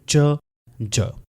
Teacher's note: Creating a fricative sound. यानी पहले stop की तरह होगा। फिर उसके बाद फ्रिक्शन भी क्रिएट होगी।